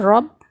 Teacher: اب یہاں پر را پر زبر ہے تو ہم کیا کریں گے، را کو موٹا پڑھیں گے، پر پڑھیں گے کیونکہ را پر زبر یا پیش ہو تو را کو پر پڑھا جائے گا اور را کے نیچے زیر ہوگا تو را کو باریک پڑھا جائے گا. یہاں پر را پر زبر ہے، ہم یہاں پر را کو موٹا پڑھیں گے